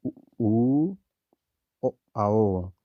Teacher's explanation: हमारे जो होठ है वो वृत्त के आकार का रूप धारण कर लेते हैं। जैसे ऊ ओ आओ, होठ गोल आकार में हो जाता है, इसको वृत्तमुखी कहते हैं।